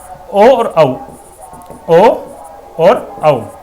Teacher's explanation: ओ और औ इनका उच्चारण स्थान क्या है? कंठ प्लस ओष्ठ, कंठ प्लस ओष्ठ। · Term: कंठोष्टम